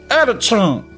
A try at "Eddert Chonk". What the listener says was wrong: See, but I still don't think that's right. You still have a tendency to say chunk, and it is chonk. Eddert Chonk.